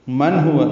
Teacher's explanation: نون ساکن کے بعد ہا آنے کی وجہ سے اظہار حلقی ہے